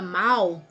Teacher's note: A palavra mal, tá vendo? Esse L tem som de U. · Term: ditongo decrescente, Ditongo decrescente